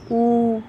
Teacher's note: जो ऊ है वो आपका पश्च सम्रत है